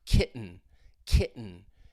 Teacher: the sound is coming from your throat when you have a T sound followed by an N. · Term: glottal stop